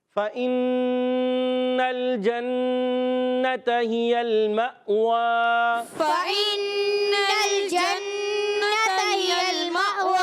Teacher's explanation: اور حمزہ ساکنہ یاد رکھنا ہے، حمزہ جو سکون والا ہوتا ہے، ساکنہ ہوتا ہے، وہ ہمیشہ جھٹکے سے پڑھا جاتا ہے. واؤ پر کھڑا زبر ہے، ایک الف کھینچ کر ادا کرنا ہے